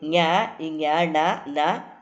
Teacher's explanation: ಞ ಞ ಣ ನ ಮ ಇವೆಲ್ಲ ಅನುನಾಸಿಕ, ಮೂಗಿನ ಸಹಾಯದಿಂದ ಉಚ್ಚರಿಸಲ್ಪಡುವಂತಹ ಅಕ್ಷರಗಳು